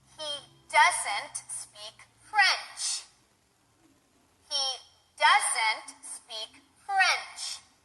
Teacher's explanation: the negative word in the statement to show that it is negative, correct? So, the pitch pattern is the same as in a statement, in a positive statement, but we are stressing the negative word.